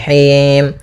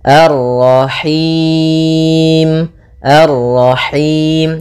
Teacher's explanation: dia lepas dari yang namanya masuk hidung dan juga lepas dari namanya imalah, yaitu harus kasrah sempurna